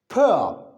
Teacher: When you utter, when you produce, when you articulate P sound, there you feel no vibration.